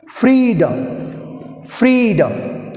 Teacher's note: first సిలబుల్ని గట్టిగా పలకాలి, రెండవ సిలబుల్ని స్లోగా ఫాలింగ్ సౌండ్ చేయాలి